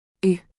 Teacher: The closest sound is the I, in ill, but deeper from the back of the throat.